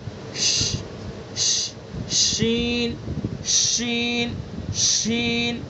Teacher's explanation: زبان کے بیچ کو اس کے مقابل اوپر کے تالو پر لگائیں گے اور ہوا کو نکالیں گے، پھیلائیں گے.